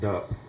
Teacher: And voicing also, so the point of articulation is the same, but you're just making the voice box kind of vibrate.